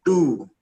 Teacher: Tu tipis, pangkal lidah rata di bawah.